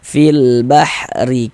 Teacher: huruf ra memiliki harokat kasrah nih, dibaca tarkik, dibaca tipis nih. Harokat kasrah atau baris kasrah nih, yang baris miring di bawah huruf nih.